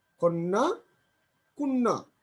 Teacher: আদ্য অয়ের উচ্চারণ ও এর মতো উচ্চারণ হচ্ছে